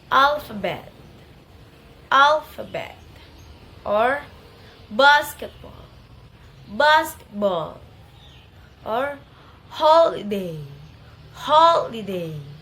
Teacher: primary stress in the first syllable and then secondary stress in the third syllable